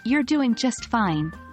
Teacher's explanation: a warm tone with a falling intonation can express comforting certainty